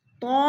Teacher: طا میں مد متصل ہو رہی ہے، 4 الفی مد ہے، ہم نے اس کو 4 حرکات کے برابر لمبا کر کے پڑھنا ہے